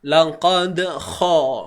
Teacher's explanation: seolah-olah kita nak membuang kahak gitulah dia bunyi untuk huruf kha ni.